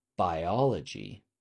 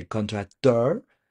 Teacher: the stress is on the last syllable. It's on the last syllable always.